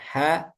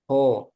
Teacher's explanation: Dan yang tipis dengan tebal beda. Ha tipis, ho tebal.